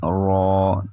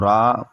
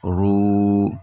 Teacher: را پر کھڑا زبر ہو یا الٹا پیش ہو تب بھی را موٹا ہوگا